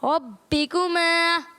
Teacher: اور یہاں با مشدد ہے، با حروف کلکلہ میں سے ہے، تو اسے جماؤ کے ساتھ پڑھنا ہے